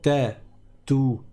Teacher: le TA c'est exactement le même point de prononciation c'est-à-dire que c'est encore une fois le bout de la langue qui va toucher le bout du palais au niveau de la racine des dents du dessus